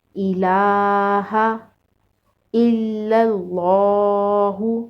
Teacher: لام کے اوپر کھڑا زبر ہے، کھڑا زبر کو ایک الف کے برابر لمبا کر کے پڑھیں گے